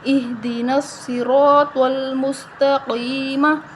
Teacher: صاد، را، طا اور قاف ان کو ہم موٹا پڑھیں گے، را کے آگے الف مدہ ہے تو ہم اس کو ایک الف کے برابر لمبا کریں گے اور قاف کے آگے یا مدہ ہے تو ہم اس کو بھی ایک الف کے برابر لمبا کریں گے، ٹھیک ہے، اور ہا کو ہم موٹا پڑھیں گے، اہدین الصراط المستقیم۔